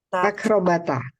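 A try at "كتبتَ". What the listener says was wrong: Salah, jangan dihidupkan mbaknya. Kalau dihidupkan mbaknya nanti sama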